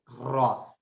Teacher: रा जो है जबान की नोक की पुष्ट को ऊपर के सामने वाले 4 दांतों के मसूड़ों से लगाकर अदा होता है। इसका मतलब ये है कि ये 4 दांतों की हेल्प लेता है रा, ठीक है, रा और ऊपर के मसूड़ों से, ठीक है, रा।